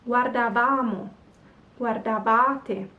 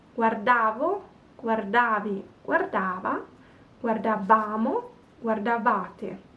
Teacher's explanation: So the verb is longer, has more syllables, but we keep the accent on the penultimate.